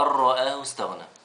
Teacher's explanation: مش هننطق النون لأن النون مش عليها حاجة